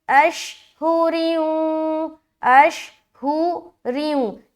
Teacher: را کو باریک رکھتے ہوئے واو سے ملا کر ہم غنہ کریں گے، ادغام ناقص کا غنہ.